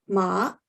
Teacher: the word horse is ma which uses the third tone